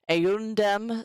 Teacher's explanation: so before the D, the M becomes an N.